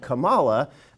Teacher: insist on putting the emphasis on the second syllable and saying Kamala